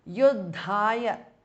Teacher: the second dha is mahapranah